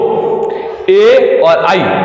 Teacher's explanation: ए और आई, इन दोनों का उच्चारण स्थान क्या होगा? कंठ तालु।